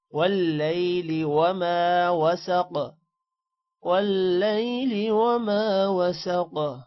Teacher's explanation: وسق قاف کو موٹا کرنا ہے اور قلقلہ بھی کرنا ہے قاف پر